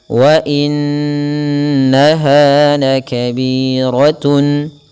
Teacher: Ada bacaan gunnah, yaitu huruf-huruf yang memang perlu kita tahan dulu dalam pelafalannya, yaitu italus sauti minal khayshum, mengeluarkan memanjangkan suara sepanjang 2 harakat, dan itu melalui rongga hidung